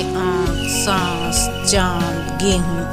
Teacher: अनुनासिक जिस ध्वनि का उच्चारण कंठ तथा नासिका दोनों से होता है, उन्हें हम अनुनासिक कहते हैं